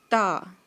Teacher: اور آپ آگے چلتے ہیں، لفظ ہے جی تا۔ تا جو ہے وہ ہمارے جو آگے والے دانت ہیں، اندر سے ان پہ زبان ٹچ کر کے تو ہم یہ لفظ ادا کریں گے